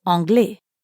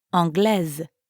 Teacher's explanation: although they both end with an S you don't pronounce it